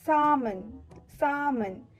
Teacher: The L to this word remains silent.